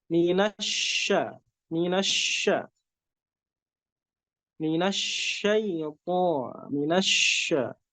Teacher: Diangkat lidahnya, tapi dikasih space sedikit untuk keluar udara. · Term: shin